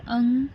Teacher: जो अंकी बिंदी होती है वो अनुस्वार होता है, जिसमें केवल नाक से ध्वनि निकलती है। नाक से ध्वनि या वायु निकलती है।